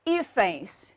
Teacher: a sílaba tônica continua sendo a penúltima, mas ela termina agora em ENS.